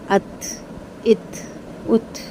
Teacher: تا کی آواز جب آپ کی نکلے گی تو تا میں تھوڑی سی آپ کی ایئر، ہلکی سی ایئر باہر آئے گی، اس کو ہمس کہتے ہیں